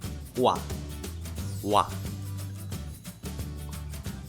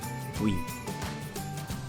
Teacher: Simply link together from horizontal vowel part and then vertical smoothly in a consecutive way. Let’s take some examples This character consists of the horizontal ㅗ and the vertical ㅏ then it sounds 오아 right? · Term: composite vowels